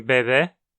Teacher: O som da letra E em espanhol, como em bebê, é algo intermediário entre o som de E e o som de E do português. É uma vogal anterior média não arredondada.